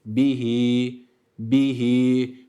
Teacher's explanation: bunu bir elif miktarı sadece bir elif miktarı uzatıyoruz fazla uzatmıyor uzatmadan da geçmiyoruz sadece bir Elif bihi bihi KT